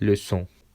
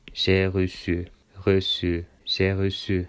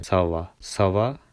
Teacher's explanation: Sedi buradaki S'yi biraz daha soft yani yumuşak bir S'ye dönüştürüyor.